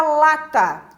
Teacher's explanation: na palavra lata, o lá é forte, o tá é fraco. Então, esse A aqui é uma vogal reduzida.